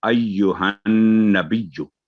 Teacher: वाले जो blank letter सारे वो साइलेंट हो जाएंगे, तो अय्युहन, नून पर तशदीद है, 2 सेकंड गुना करेंगे